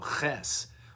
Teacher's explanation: Oh, that's more guttural. So I'm thinking about how to use my larynx, the gut, in order to pronounce the ch sound.